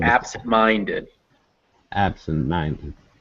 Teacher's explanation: They're just nt, did. But then ab is stressed, but it's not as stressed as mind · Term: secondary stress